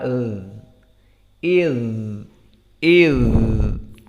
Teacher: Di saat disukunkan za masih ada suara iz, iz. Dan tidak ada nafas. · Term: rakhawah